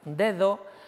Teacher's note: Dedo, ahí tengo 2 sonidos distintos. Tengo una D oclusiva y luego tengo una D fricativa interdental